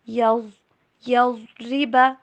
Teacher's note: را کو بالکل باریک، ضاد کو ایک دم سے پر کر کے،